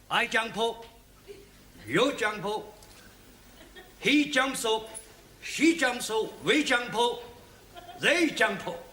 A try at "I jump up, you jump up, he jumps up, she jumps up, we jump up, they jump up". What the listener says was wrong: you must try not to end every word in O, okay?